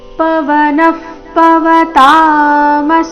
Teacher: ಪವನ ನಂತರ ಬಂದಿರುವ ವಿಸರ್ಗದ ಉಚ್ಚಾರಣೆ ಅರ್ಧ ಪ ರೀತಿ